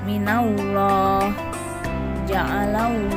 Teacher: huruf lam tafkim dibaca tebal